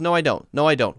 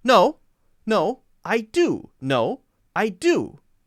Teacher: So there's a longer pause and more stress on the no.